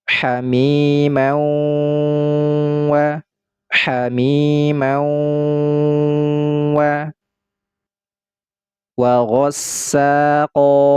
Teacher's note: Pada hukum idgham bi gunnah ini ada dengungnya, yaitu dengung tingkatan akmal.